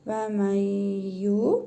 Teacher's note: İdğam-ı mə'al-qunnə qaydasına görə nun hərfini burnumuzda tələffüz edərək bir əlif miqdarı uzadırıq. Yə hərfini isə şəddə verin.